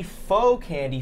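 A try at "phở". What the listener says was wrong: Pho. You said faux.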